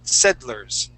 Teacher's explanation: You can say settlers, but we would normally say settlers. So it's more like saying sed and then lers, settlers.